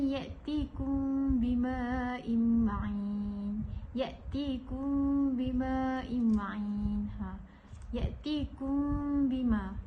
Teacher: tidak terlalu diserlahkan mim sakinah tu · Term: ikhfa' syafawi